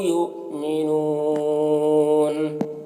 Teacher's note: یؤمنون یہاں پر حمزہ ساکنہ ہے، واو کی شکل میں جھٹکا لگے گا، نون یہاں پر وقف کی صورت میں مد عارض وقفی ہوگا